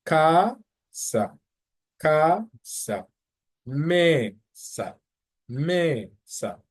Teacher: So the emphasis would be on the ME. The same thing applies for casa.